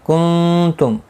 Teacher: نون ساکن کے بعد حروف اخفا کا تا اخفا حقیقی ہوگا، گناہ کے ساتھ پڑھیں گے